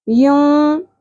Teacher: नून की आवाज़ को छुपाने के साथ साथ ठहराएंगे भी नाक में। यूं, ये छुपा लिया। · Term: इख़फ़ा